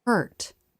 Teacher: watch the tongue pull back and up before coming forward for the T